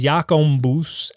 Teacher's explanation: Jacobus gets nasalized and becomes Jacombus